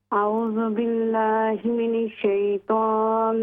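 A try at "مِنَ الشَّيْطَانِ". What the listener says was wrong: نون کا زبر کلیئر کریں. من الشیطان الرجیم.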